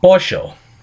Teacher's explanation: The defining characteristic of this dialect is the use of sheísmo, where the double L and Y phonemes both sound like sh.